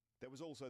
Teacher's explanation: the z sound at the end of was links that word with the word also